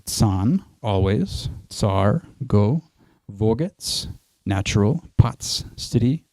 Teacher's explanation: Another Hebrew sound is the dental affricate ts